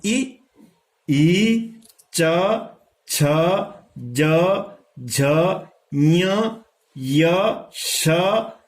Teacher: इनका उच्चारण स्थान है तालु, जो दांत के पीछे।